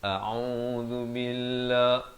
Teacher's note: A dipangkal kerongkong, ain di pertengahan kerongkong 2 harakat. A'udzu billah.